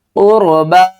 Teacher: قاف کو بھی موٹا پڑھیں گے اور را کو بھی موٹا